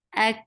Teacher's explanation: Hamza is very sharp, attached with kaf. Kaf will get sifa of hams, and hams is a flow of breath. This is shidda letter, so you will cut off the makhraj, but then you will open it a little to create this hams, and hams is a flow of breath.